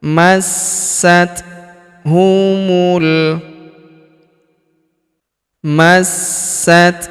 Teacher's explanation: Huruf sa kita panjangkan empat atau lima harakat karena di depan huruf sa terdapat alif yang di atasnya terdapat tanda garis bacaan panjang empat atau lima harakat.